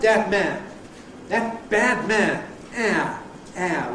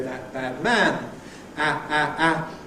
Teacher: much opener quality, almost like Cardinal 4 [ a ]. We now have this opener quality [ ˈðat bad ˈman ]. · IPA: æ˕